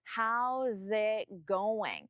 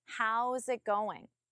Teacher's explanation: even though there is no connection between it and going, I still don't pause between them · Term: connect your words